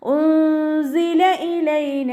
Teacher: സായുടെ സൗണ്ടിനെ വ്യക്തമായിട്ട് ഉച്ചരിക്കുക കേട്ടോ, സീനിൻ്റെ സൗണ്ടായി പോവാതെ നോക്കുക.